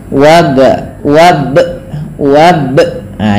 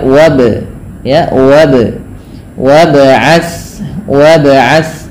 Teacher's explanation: dengan memanjangkan hurufnya Kemudian pada lafal W ada ba sukun ya Ba berharakat sukun ini perlu dipantulkan dalam pembacaannya tidak hanya cukup wabat tapi dia harus ada bacaan memantul yang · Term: Qalqalah